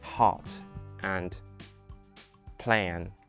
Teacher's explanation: the vowels don't bend like Americans say hot and plan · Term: international English accent